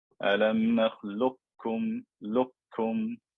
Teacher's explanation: The most predominant opinion, and the way that virtually all mushafs are printed, is to do complete idgham and the qaf disappears. The lam gets joined straight to the kaf.